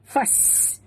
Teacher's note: Fas, bunyikan sofir pada huruf sin.